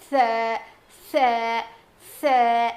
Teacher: زبان کی نوک کو سامنے کے دو دانتوں کے کنارے کو لگانے سے ادا ہوتا ہے. مطلب ایڈجسٹ کو لگانے سے ادا ہوتا ہے.